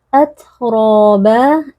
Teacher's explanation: huruf ta yang sukun bersifat hams dan juga syiddah. Suara kita tertahan tapi ada sedikit aliran nafas, tidak boleh berlebihan